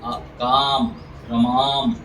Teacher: जब आ का उच्चारण करते हैं ना, थोड़ा सा मुंह खोल के बोलते हैं